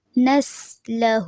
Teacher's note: نسلہ سیٹی کی آواز رہے گی سین میں، اور ہو کو تھوڑا سا لمبا کریں گے کیونکہ یہاں پہ قائم مقام مد اصلی ہے.